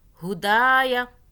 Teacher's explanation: یا کو نہیں کھینچنا، دال کے آگے الف ہے، دال کو کھینچیں گے۔